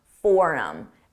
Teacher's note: I dropped that H sound on him and it sounded like for him.